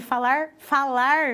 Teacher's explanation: é com esse R retroflexo